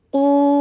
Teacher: قاف کو ہیوی کیجیے، ضمہ کے لیے ہونٹوں کو گول کیجیے